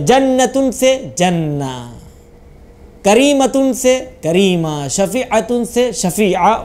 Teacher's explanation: ते को हे में बदल दें, हाय साकिना में, यानी रहमह पढ़ें · जो गोल ते है वक्फ करते टाइम उसे आपको गोल हे में चेंज कर देना है, यानी ते का नुक्ता हटा दीजिए, वो हा खुद ब खुद बन गई, बस उसको साकिन कर दें आप। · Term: वक्फ इब्दाल